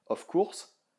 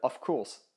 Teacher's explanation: le off, c'est pas un O en fait, c'est différent comme son que le O français. C'est légèrement plus en arrière dans la bouche, c'est légèrement plus proche du A.